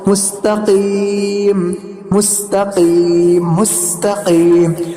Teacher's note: کچھ لوگ اس کو مستقیم مستقیم مستقیم ایسا کرتے ہیں تو یہ غلط ہے. تو ہم قاف کو کاف نہیں پڑھیں گے بلکہ قاف کو پور ہی پڑھیں گے